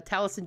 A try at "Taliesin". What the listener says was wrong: You don't pronounce the E shit.